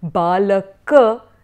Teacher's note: someone from a Hindi background would tend to cut off the last vowels